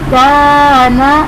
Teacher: اب کاف باریک ہے تو یہاں پر الف بھی باریک پڑھا گیا